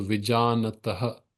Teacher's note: Vi is short, ja is long, na is short. So first and third pada, short, long, long.